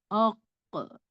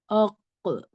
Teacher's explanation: آپ کے زبان کا جو روٹ ہے وہ جنبش ہو جانا چاہیے، مطلب ایک جرکنگ، ایک وائبریشن ہونا چاہیے اچھا، اور ڈبل ساؤنڈ سنائی دینی چاہیے، آق اس طرح۔ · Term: قاف کا قلقلہ